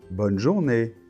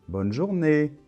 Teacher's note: Donc attention, l'accent tonique est à la fin.